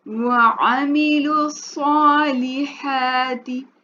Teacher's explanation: अब सौद जो है इसका मखरज जो है पुर है, तो ये हरूफ मुस्तालिया से है, तो इसलिए हम सौद को पुर पढ़ेंगे।